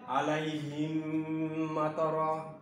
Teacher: প্রথম মিমটাকে দ্বিতীয় মিমের দ্বারা পরিবর্তন করে প্রবেশ করে দিয়ে পড়তে হবে। আর পড়ার ক্ষেত্রে গিয়ে যে বিষয়টি অবশ্যই তোমাদেরকে লক্ষ্য রাখতে হবে, সেটা হলো যে এই মিমকে অবশ্যই তোমাদেরকে গুণের সঙ্গে একটু টেনে পড়ে নিতে হবে। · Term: মিম সাকিনের ইদগাম